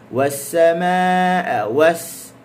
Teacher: sin, hujung lidah dia menghala ke gusi bawah